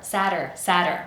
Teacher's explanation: The first syllable is the strongest and we have the vowel sound a.